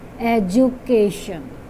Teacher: D sound will not be pronounced. D is there, but we have to pronounce the sound of J. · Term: J sound